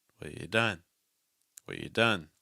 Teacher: And then done's going to pop off in pitch. So that's your movement. Low, low, low, high.